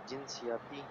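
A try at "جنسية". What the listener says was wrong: ये लफ्ज़ ना जिनसी है, जब भी इस तरह किसी लफ्ज़ के आखिर में गोल ता होती है तो हम उसको उसके ऊपर हरकत वाला नहीं पढ़ते, हम उसको बस हाँ की आवाज़ में पढ़ लेते हैं, जैसे जिनसिया इस तरह पढ़ते हैं।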